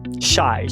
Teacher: Nome técnico, consoante fricativa, pós-alveolar desvozeada. Apelido: ou X, ou xaxaxã, é o shushing sound.